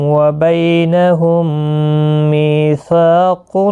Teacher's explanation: میم ساکن کے بعد دوسرا میم آیا ہے، ادغام شفوی ہوگا، گنہ کے ساتھ پڑھیں گے۔ می یا مدہ بھی ہے، سا الف مدہ ہے، ایک ایک الف کی مقدار کے برابر کھینچ کر پڑھیں گے۔